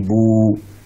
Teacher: Juga dengan ba berharakat dhammah yang tadinya bu, kemudian karena setelahnya ada huruf waw sukun menjadi bu, dua harakat. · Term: mad